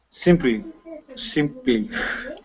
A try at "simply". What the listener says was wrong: Yeah. There you go. Get that L in there. One more time.